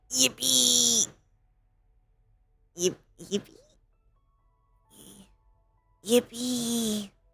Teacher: really breathy and quiet, and you had problems hearing her